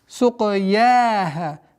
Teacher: Мягкое произношение я и ха в размере двух огласовок